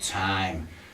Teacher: Time. You feel it goes to your nose.